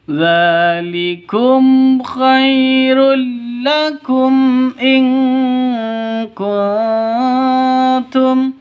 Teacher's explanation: Mim mati bertemu dengan hamzah. Jelas, terang karena izhar safawi. Izhar safawi terang, jelas, tidak boleh disentak, tidak boleh didengungkan.